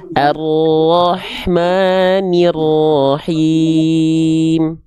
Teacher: sekali lagi rnya dikuatkan lagi sedikit getaranya